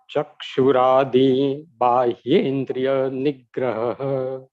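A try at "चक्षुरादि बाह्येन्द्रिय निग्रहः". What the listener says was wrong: Correct. Can you repeat it? Both.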